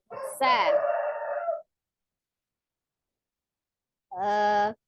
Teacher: Kemudian masuk ke huruf yang kedua adalah huruf sin ya, seperti huruf zai. Makharijul huruf sin juga sama, ujung lidahnya di antara ujung gigi seri atas dan bawah